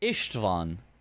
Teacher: Little fun fact, Ivan is a Hungarian name. The S is pronounced more like a short SH sound.